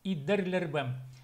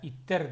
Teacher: когда глухое попадает между двумя гласными, т попадает между и е, оно озвончается и дер получается, вот так вот.